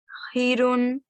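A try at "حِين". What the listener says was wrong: Well done, that was better.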